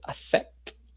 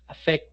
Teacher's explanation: Si tomamos esa pronunciación de t, affect, vamos a sentir que no hay vibración